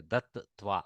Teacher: You have to literally get the audio of two takaras there. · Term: dvitva of takara